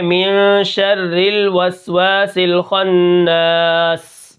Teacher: سین کے اندر ہم نے کیا کرنا ہے، سیٹی ادا کرنی ہے